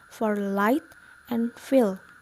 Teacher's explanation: and let air stream through the nose example and then liquid we let airstream on the sides of our tongue